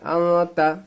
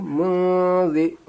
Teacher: یہاں پہ اخفا کریں گے، ناک میں آواز کو رکھنا ہے